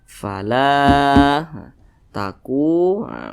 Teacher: posisinya tepat berada di belakang huruf alif dan dia berharakat fathah panjangnya itu dua harakat atau kira-kira dua ketukan